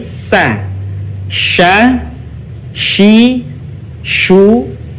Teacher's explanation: huruf Sya keluar dengan menyentuhkan Tengah lidah kita dengan langit-langit ucapkan mengalir udaranya dan mengalir pula nafasnya bahkan ketika melafalkannya menyebar